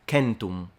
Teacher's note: the pronunciation of 100 would have been centum, with a completely nasalized M, and the C is a K